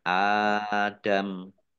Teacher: dua harakat Kamali Adam Alif fathah berdiri thii dua harakat kemudian mimnya dibaca sukun karena waqaf dan dibaca pendek karena tidak ada tanda panjangnya